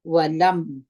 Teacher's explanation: یو ځای کوو ولم لکه دلته چې موږ تاسې اظهار وکړي میم مکمل وایو غونې ته نه بیایو ولم د میم مخرج به ټینګ کړي شونډان به ټینګ سره ونیسي